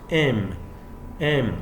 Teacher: Your two lip closes. M, because the M is a bilabial sound